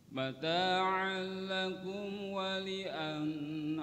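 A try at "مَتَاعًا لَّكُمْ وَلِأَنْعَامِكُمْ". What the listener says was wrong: Jangan tahan, idhar wa li'an'amikum.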